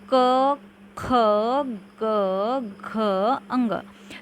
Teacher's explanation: कंठ यानी कि गला से जिसका उच्चारण होता है उन्हें कंठ्य व्यंजन कहते हैं।